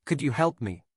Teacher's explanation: raising your voice slightly at the end of could you help me makes it sound like a genuine question